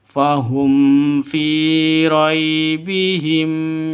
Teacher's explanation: Di sini ada mim mati bertemu dengan fa, jelas terang, tidak boleh dengung, tidak boleh panjang. Kenapa? Karena izhar safawi, jelas.